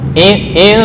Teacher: Ya, nun bertemu tak ikhfa. Ya, ikhfa itu remang-remang, jangan idhar mamdud.